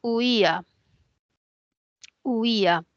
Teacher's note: Esta es una palabra que tiene un diptongo entre la U y la I, homogéneo, y tiene un hiato entre la I y la A. Y ese hiato es un hiato acentual porque hay una cerrada, una abierta y la cerrada tiene la mayor fuerza de voz